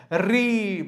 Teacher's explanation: र तथा री का उच्चारण मूर्धा से होता है